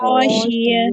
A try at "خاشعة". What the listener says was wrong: خاشعة. عین بھی ادا کریں نا.